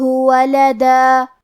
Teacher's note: کلمت ولدہ کے آخری میں دال پہ تنوین زبر ہے، ہم یہ کلمہ پہ رکیں گے تو تنوین پہ مد الف سے رکیں گے